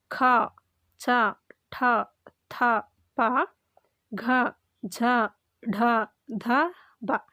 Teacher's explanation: ಹೆಚ್ಚು ಉಸಿರಿನಿಂದ ಉಚ್ಚರಿಸಲ್ಪಡುವ ಅಕ್ಷರಗಳು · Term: ಮಹಾಪ್ರಾಣ